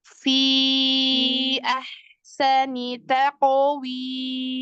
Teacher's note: Fi huruf fa itu ada rokhwahnya. Fi depannya kasih V-nya.